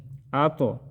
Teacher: طوا میں ہم قلقلہ کریں گے اور طوا کو ہم موٹا ادا کریں گے